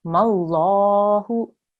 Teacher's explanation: remember this is a majestic lam. So again, we will make a thick sound here.